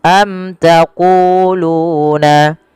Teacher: jelaskan dia mimnya karena dia bacaan izhar syafawi